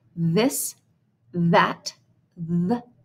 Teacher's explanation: th is voiced at the beginning of articles and function words like this that the